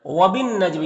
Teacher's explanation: وَبِالنَّجْمِ، یہاں پر جو ہے نون مشدد ہے تو نون میں غنہ ہوگا، یعنی نون کی آواز کو ناک میں گنگنا کر پڑھیں گے